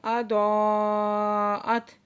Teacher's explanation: یہاں پہ مد ہے، مد متصل، 5 سے 6 حرکت کھینچ کے پڑھیں گے